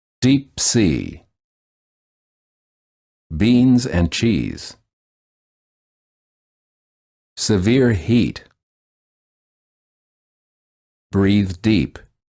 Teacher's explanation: the tongue is tense. It is high and far forward near the roof of the mouth. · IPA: /iː/